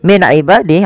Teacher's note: Min ibadih ada nun sukun bertemu dengan ain, yaitu dibaca dengan jelas suara nunnya karena dia ada bacaan izhar halqi.